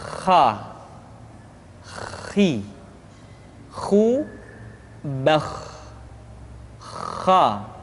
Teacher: pengucapan huruf kha persis terdengar seperti orang yang tidur dalam keadaan mengorok